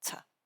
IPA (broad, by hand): tə